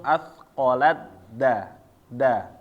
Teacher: Tak ketemu dal, jadi kita lihat taknya di sini hilang. Jadi langsung asqalat da ya. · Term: idgham kamil